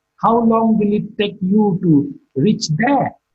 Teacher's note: There is marked with a falling tone.